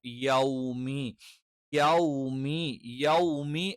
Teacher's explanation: യോ അല്ല, യ എന്ന് തന്നെ കറക്റ്റ് പറയണം